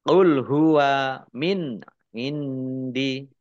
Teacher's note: Nun sukun bertemu dengan huruf ain bacaan izhar dibaca jelas